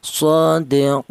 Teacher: Tol itu artinya panjang, yaitu panjangnya 3 alif atau 6 harokat atau 6 ketukan.